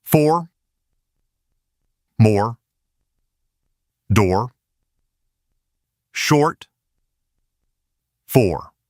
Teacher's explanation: In /ɔr/, that rounded feeling needs to hold from start to finish. Don't let it flatten out. · So, or starts rounder and carries that rounding all the way into R.